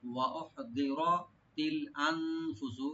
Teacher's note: নুন সাকিন এখানে একটু লাইট গুণ হবে।